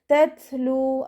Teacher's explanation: ത സുക്കൂനാവുമ്പോൾ കുറച്ച് എയർ പുറത്തോട്ട് പോകുന്ന സൗണ്ട് കൊടുക്കാൻ ശ്രദ്ധിക്കുക